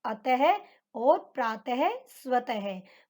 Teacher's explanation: इनका जब उच्चारण करते हैं विसर्ग का, तो इसमें है का प्रयोग होता है